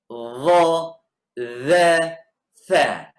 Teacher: Dha, dhal, tha keluar dari ujung lidah bersama ujung gigi siri atas.